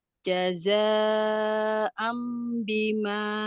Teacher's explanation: Fatah tanwin bertemu dengan ba iqlab E menjadi mim